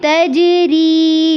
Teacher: تجری میں جیم پر ساکن ہے، اس پہ قلقلہ کرنا ہے. ری میں یا ساکن سے پہلے زیر ہے، اس کو لمبا کرنا ہے.